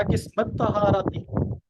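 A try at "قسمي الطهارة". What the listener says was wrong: नहीं नहीं नहीं, किस्मई है ना, या को मिलाना है।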